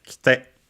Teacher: it becomes kite with the e barely heard if at all because it's between unvoiced consonants. And so usually the accent also moves on the on the other syllables, on the te, kite.